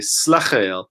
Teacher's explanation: in the South the accent tends to be on the schwa